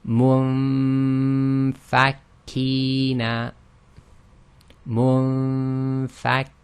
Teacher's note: We'll do the ghunna on the noon sakin, but we're going to move straight to the articulation point of the fa.